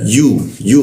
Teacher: yu posisinya di tengah lidah dia